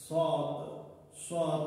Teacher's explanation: Sad hərfini tələffüz edərkən dilin ucu aşağıdakı qabaq dişlərə dəyməklə tələffüz olunur. Məsələn, sad özü də qalın şəkildə tələffüz olunur.